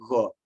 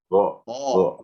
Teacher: Jangan kena langit-langit. Kalau kena langit-langit, jadi go.